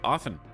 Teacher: I refuse to believe anyone pronounces the T in often.